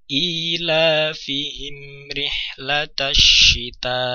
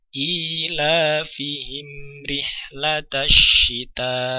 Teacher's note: mim sukun bertemu dengan ro maka terbaca juga sebagai izhar syafawi mim sukun terbaca dengan jelas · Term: idhar syafawi